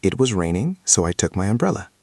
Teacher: Notice the sound of so. It is not short. It is not s. It is slightly long.